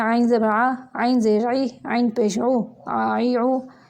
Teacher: ये वस्ते हलक यानी हलक का दरमियानी हिस्सा वहाँ से निकलते हैं